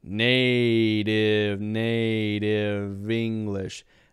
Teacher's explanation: we got the D sound instead of the T